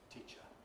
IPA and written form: ˈtiʧə (teacher)